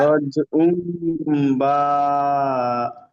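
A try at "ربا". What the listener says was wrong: না, বা টান দিচ্ছেন কেন, রজ বা।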